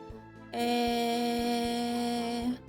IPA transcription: е